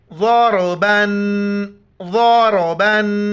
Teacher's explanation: را کو موٹا پڑھنا ہے